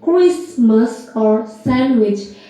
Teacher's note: The Christmas, the T and the D is lost. When we say Christmas, the T is lost, and the sandwich, the D is lost. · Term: loss of sound